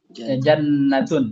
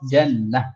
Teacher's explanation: ketika kita wakaf kaidah umumnya itu diubah menjadi h